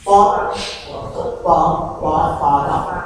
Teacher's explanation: ये सारे के सारे आपको ना ओष्ठ से बोलते हैं